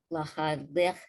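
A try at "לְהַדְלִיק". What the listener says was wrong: Lahadlik. That's a kuf. Lahadlik.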